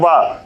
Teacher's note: आपके नीचे का जो ओष्ठ है वो ऊपर के दांतों में हल्का सा स्पर्श कर रहा है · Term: दंतोष्ठ ध्वनि